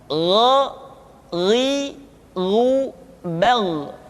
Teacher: Diucapkan seperti kita mengucapkan huruf Kha, yaitu diucapkan dari pangkal tenggorokan kita. Yang membedakannya adalah Kha mengalir nafas dan Gha tidak mengalir nafas.